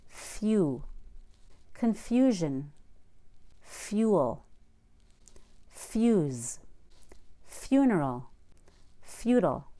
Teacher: Also, put a Y after an F and before a long U.